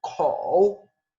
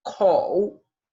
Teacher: Y fíjense cómo el tono, la marca de tono, está en la O, porque la O se pronuncia con la boca mucho más abierta que la U